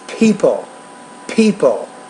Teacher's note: you got to pronounce that with more aspiration than what you're doing